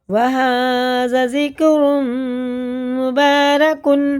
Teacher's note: ذکرم نہیں کرنا، نہ جکرم کریں گے، ذال باریک ہوتا ہے